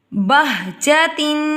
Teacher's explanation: بہجتن، تنوین کے بعد شین آ گیا، اخفاء مرقع کا ادا ہوگا، یعنی کہ ادھورا گنہ ناک میں چھپا کر باریک اخفاء ادا کریں گے